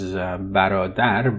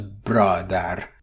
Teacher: Here in Persian you have a word medial epenthesis of a that breaks the consonant cluster. So bra becomes bara, bradar becomes barodar.